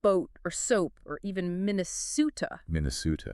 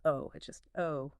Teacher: It's a very distinct O. It doesn't have that slight ooh off glide you hear in the standard American accents. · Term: pure, long O sound